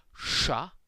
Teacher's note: The letter sh, which is called the sha in Russian, which this book says is just like the sh in the word shoot. I'd say that it's a much richer, fuller, deeper sound than that sh consonant cluster in English